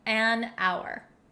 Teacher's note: we totally get rid of the h sound and that's why we say an hour